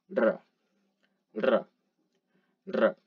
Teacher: And we know it's a trill, meaning that we take our tongue and hit it against the alveolar ridge multiple times, sort of like a vibration. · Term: rolled R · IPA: [r]